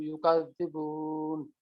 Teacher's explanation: এখানে হচ্ছে জজমার আগে পেশ আছে বার উপরে, সুতরাং এখানে হচ্ছে এটা মাদের হরফ, মাদের হরফের পরে নুনের ওখানে ওয়াকফ হলো, জন্য আমরা 3 আলিফ টানবো।